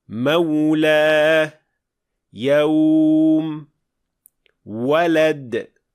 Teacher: vau g'oyrul maddiya esa ikki lab orasidan chiqadi. Eng muhimi shundaki, lablar o shaklida yumaloqlangan bo'lishi kerak. · Ammo bugun gapirayotganimiz vav g'oyrul maddiyah esa ikki lab orasidan chiqadi.